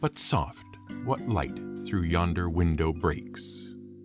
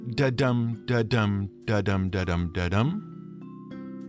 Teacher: five pairs of alternating stressed and unstressed syllables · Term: iambic pentameter